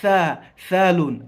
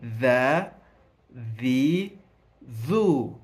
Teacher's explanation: Lakini hii herufi ya dhal ulimi unaugonganisha na yaani ncha ya ulimi inaigonganisha na meno kwa ndani pasi na ulimi kuutoa nje. Ndio utofauti wake kwenye kutamka.